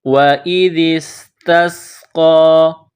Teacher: وَإِذِ اسْتَسْقَىٰ، واو ہونٹوں کو گول کریں گے، ذال زبان کا سرہ تھوڑا سا باہر نکالیں گے، ذال کو نرم پڑھیں گے، ذال کو سین کے ساتھ ملانا ہے، سین میں سیٹی کی آواز پیدا کریں گے، تا کو سین کے ساتھ ملائیں گے، یہ نقطوں والا بڑا قاف ہے، اس کو موٹا کرنا ہے، قاف کے اوپر کڑا زبر ہے، ایک الف کے لمٹ میں اس کو کھینچنا ہے۔